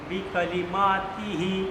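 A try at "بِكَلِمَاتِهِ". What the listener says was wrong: आप थोड़ा सा काफ को खींच रहे, थोड़ा सा बिकाली माँ बिकाली बिकाली माँ बिकाली माँ बिकाली माँ तिही बिकाली माँ तिही तिही नहीं तिही तिही हाँ ऐसे समझ में आ रहा है क्या लिखा हुआ है?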